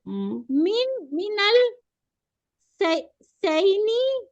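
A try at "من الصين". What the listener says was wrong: सैनी नहीं है भाई, चैनी होता है, चैनी होता है या चीनी, चीन होता है। हाँ, मिना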